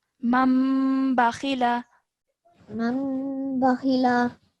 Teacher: If the answer is yes, then you do a 2-second light nasal sound. Okay, so because after meme there is a ba, we have to produce a 2-second nasal sound.